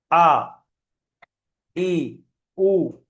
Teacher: আলিফের মাখরাজ মুখের খালি অংশ থেকে উচ্চারিত হয়